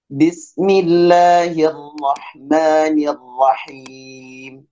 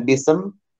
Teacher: Hati-hati ada huruf sin sukun, tidak boleh mantul